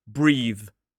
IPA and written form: briːð (breathe)